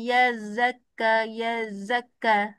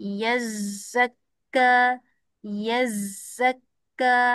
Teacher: Lemah sangat dia punya safir. Kuatkan safil. Sebab safir sifat kuat nama dia. Sifat yang sangat menyerlahkan huruf tersebut.